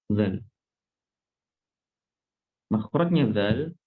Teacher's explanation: Makhrajnya zal ada di punggung ujung lidah. Makhrajnya punggung ujung lidah.